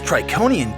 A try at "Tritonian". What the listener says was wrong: Tritonian. It's pronounced Tritonian. Tritonian. With a T in the middle.